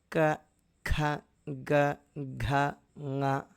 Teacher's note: అయితే క, ఖ, గ, ఘ ఇవన్నీ గొంతు స్థానం నుంచి వస్తున్నాయి.